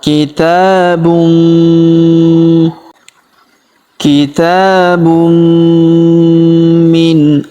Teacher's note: harakat i dibaca mi. Maka tanwin unnya melebur masuk ke huruf mi yang berharakat tasydid. Kita tahan dan kita tekan serta kita dengungkan dua sampai harakat.